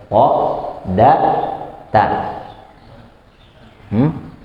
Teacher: Dia ujung lidah, tarful lisan berjumpa dengan gigi seri. Tapi gigi serinya bagian atas atau pangkal ya. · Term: Ta, dal dan ta